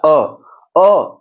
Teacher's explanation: पहला अ कर रहे हैं, देखिए गोल नहीं हुआ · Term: अवृत्ताकार